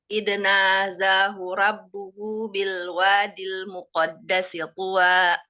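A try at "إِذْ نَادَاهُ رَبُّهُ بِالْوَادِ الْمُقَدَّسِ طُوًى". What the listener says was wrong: Ya benar, tapi ada huruf yang salah. Huruf yang salah tadi dal. Seharusnya dal tadi dibaca iznaza.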